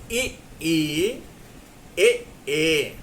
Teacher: गला थोड़ा सा बैठ रहा है और जीभ का जो अंदर वाला भाग है वहां थोड़ी सी जीभ मोटी हो रही है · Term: अग्र स्वर